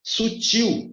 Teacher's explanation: a sílaba mais forte está no til